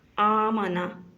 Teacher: پہلا لفظ ہے آمنا، حمزہ کے اوپر کھڑی زبر ہے، اس کو ایک الف کے برابر لمبا کیا جائے گا